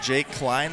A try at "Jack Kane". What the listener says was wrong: Jake Kane. No, Jake Kane. It's Kein.